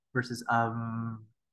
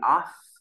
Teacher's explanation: So off versus you should be able to feel your throat vibrating when you say of, but not vibrating when you say off.